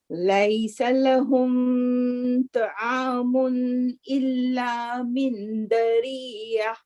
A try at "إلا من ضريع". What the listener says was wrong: من ضريع. The ضاء is not دال. ضاء. من ضريع.